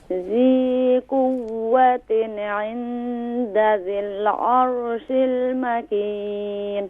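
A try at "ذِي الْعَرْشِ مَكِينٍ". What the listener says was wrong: عرش نہیں ہے، عرشی مکین. ذال کو کیسے ادا کرتے ہیں؟ ذال. ذی کیونکہ یائے مدہ ہے تو اسے ایک الف کی مقدار کھینچیں گے.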